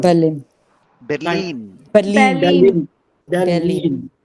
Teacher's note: The stress is on the second half.